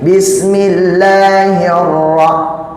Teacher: Ro-nya ro tafkhim karena ro-nya itu tasdid, dia bertemu dengan di ro-nya itu harokat fathah.